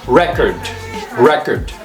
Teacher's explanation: when it's a noun the stress is on the first syllable so it's pronounce record record